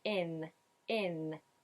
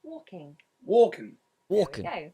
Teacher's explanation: he's using the tip of the tongue high up on the alveolar ridge closing it at the front